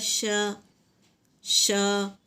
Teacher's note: پھر اس کے بعد جیم، زبان کے بیچ کا حصہ اوپر کے تالو سے لگائے تو جیم ادا ہوتا ہے، جیسے جیم زبر ج۔ اس کے بعد زبان کے بیچ کا حصہ تالو کی طرف اٹھائیں تو شین ادا ہوتا ہے، جیسے شین زبر ش، ش۔